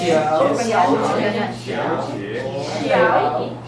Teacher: Both are third tone. It's not 小姐 It's 小姐 So the first one changes.